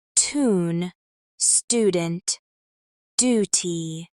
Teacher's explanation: in some words where other accents might pronounce a Y sound after certain consonants, Americans do not. For example, in British English, tune might sound like tune, but in American English, it's more like tune.